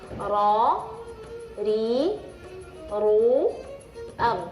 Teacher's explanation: Jadi kalau ra tebal, ru tebal, kalau ri tipis.